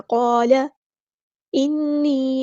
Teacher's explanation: نون پہ غنہ زمانی ہو رہا ہے، ایک الف کے برابر رکیں گے · لام کے زبر کو لمبا نہیں کرنا ، قال نہیں پڑھنا، قال انی، نون پہ غنہ زمانی ہو